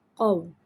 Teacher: قاف واو زبر قو۔ اور جب ہم قو پڑھتے ہیں تو ہونٹوں کو گول کر دیتے ہیں